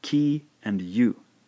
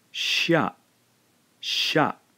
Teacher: when we blend these two syllables together we end up with a single syllable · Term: single Blended syllable